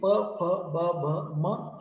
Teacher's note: ओठांजवळ हवा अडवली जाते आणि प, फ, ब, भ, म हे उच्चार होतात. त्यांना आपण ओष्ठ म्हटलं. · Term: औष्ठ